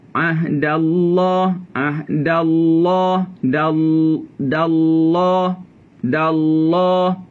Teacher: Pucuk lidah menyentuh pada gusi tempat tumbuh gigi kaki atas